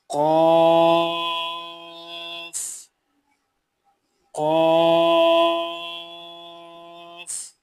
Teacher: زبان کی جڑ جب کوے کے قریب سے نرم تالو سے لگے تو اس سے قاف ادا ہوتا ہے